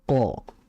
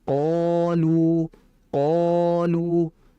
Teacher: Ketika kita mengucapkan qo itu terdengar tebal. Tapi kalau kita menambahkan alif karena dibaca mad sehingga ketebalannya jauh lebih jelas sehingga dibaca qolu qolu karena memang dibaca panjang.